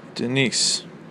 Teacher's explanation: You hear how the stress is on niece? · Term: iambic